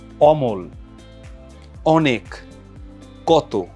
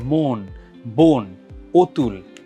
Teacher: অ এর যে স্বাভাবিক উচ্চারণটা আর সংবৃততে এটা হচ্ছে ও এর মত উচ্চারিত হয়